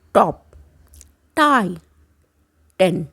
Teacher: टंग कहाँ टच हो रही है, ऊपर वाले दांतों के पीछे